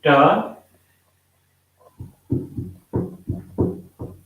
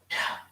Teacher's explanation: Ta again is a voiceless sound, and ideally it should be pronounced as ta. There should be no vibration here in your voice box.